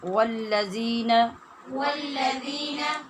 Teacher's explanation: والذین میں واو پور اور زال باریک ہے